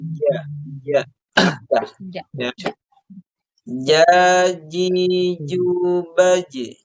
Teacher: huruf Jim ini ketika kita ucapkan itu menempel atau bertemu antara Tengah lidah dengan langit-langitnya jadi Jim itu harus diperhatikan bukan dari ujung lidah ya bukan